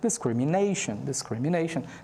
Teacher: Então, screen também é fortezinho, mas o nei é mais forte. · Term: primary stress